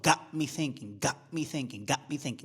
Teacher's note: Got me thinking, got me thinking, got me thinking. Don't pronounce the T. That's a glottal stop. Got, like uh-oh, got me thinking, got me thinking, got me thinking, got me thinking, got me thinking, got me thinking, got me thinking.